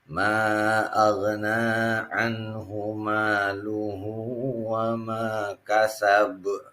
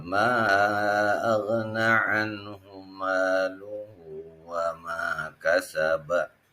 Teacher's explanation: karena ada ba yang merupakan huruf qalqalah, dan ini pun dibacanya waqaf, dimatikan, maka ini dihukumi menjadi qalqalah kubro. Qalqalah kubro ini yaitu huruf qalqalah yang diwaqafkan.